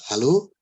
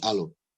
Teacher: they'll be dropping the H. So instead of hot, they will be saying hot.